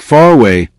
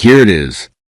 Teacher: In some accents, you may also hear an R-like sound connecting words.